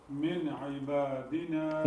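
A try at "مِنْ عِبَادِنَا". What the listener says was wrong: Good, so we have noon sakin.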